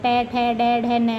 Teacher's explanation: जो ट वर्ग है ट ठ ड ढ न वाला वो मूर्धा से बोला जाता है